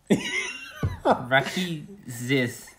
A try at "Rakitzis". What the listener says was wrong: That's better. Yeah, it's just a lot of emphasis on the I there. It's Rakitzis. But I guess it's just how you say I. But yeah, Rakitzis.